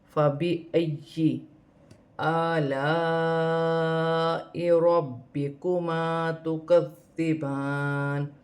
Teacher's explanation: یا مشدد 2 مرتبہ پڑھا جائے گا، پھر ایک اپنی حرکت کے ساتھ پڑھا جائے گا